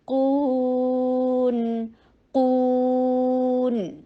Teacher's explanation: قاف کے اوپر ضمہ ہونٹوں کو گول کیا جائے گا اور نون ساکن ہوگا